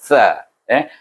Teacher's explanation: Mahraj sa ialah belakang hujung lidah bertentangan gigi kacip.